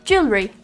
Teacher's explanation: just drop that extra r sound